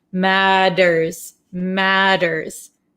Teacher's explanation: this T sound here in American English is going to sound like a soft English D sound.